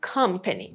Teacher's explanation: Because the stress is on the first syllable, you don't have the schwa sound on the first syllable. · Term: stressed syllable